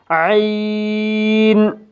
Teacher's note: وا وا عین عین بھی ہا کی طرح وسط حلق سے ادا ہوگا۔ عین ادا کرتے وقت آواز وسط حلق سے نکالیں گے، یعنی حلق کے درمیانی حصے سے۔